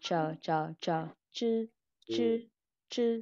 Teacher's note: Âm ZH là chờ, chờ, chờ, chư, chư, chư. Mình chỉ cần uốn lưỡi lên thôi, mình không cần phải đưa hơi gì cả. Chư, nó rất là nhẹ thôi.